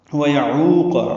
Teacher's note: عین وسط حلق سے ادا ہوگا، واو مدہ ہے، قاف پر.